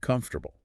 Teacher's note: See how the O and the A in the middle kind of get squished or reduced?